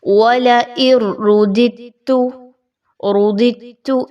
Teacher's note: وَلَئِن رُّدِدتُّ اس طریقے سے نہیں پڑھا جائے گا، چونکہ آگے تا کا حرف آ رہا ہے. دال اور تا کے مخارج آلموسٹ سیم ہیں، اس وجہ سے یہاں پر قلقلہ کی ویکنس ہوگی